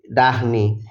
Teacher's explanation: এটা বাংলা ঢ এর মত উচ্চারিত হয় না মহাপ্রাণ নয় একটু স্ট্রেচ আছে মাত্র